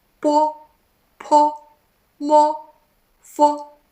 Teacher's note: Sounds like there's o at end. So the shape of your mouth is like ellipse.